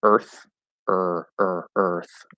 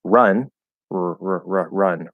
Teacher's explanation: It's the same sound, it's just the vowel is a bit longer, okay? Some people might make a very slight difference between them.